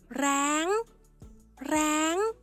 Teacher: Nhưng chỉ cần thay đổi hỏ hiệp thành rơ rưa thì thanh điệu của từ này sẽ được biến đổi thành thanh tri, đọc là ráng, ráng